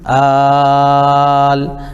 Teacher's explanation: اس کو کم از کم ہم جو ہے 3 الف کھینچیں گے اور زیادہ سے زیادہ 5 الف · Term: مد لازم کلمی مخفف